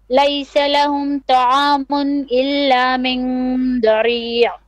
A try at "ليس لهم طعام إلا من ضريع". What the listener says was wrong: Okay, make your ta also a bit more heavy. طعام.